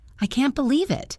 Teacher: High pitch, loud, excited. That was happy shock.